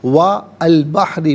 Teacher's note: بحری میں را کے نیچے زیر ہے، را کو باریک کر کے پڑھیں گے۔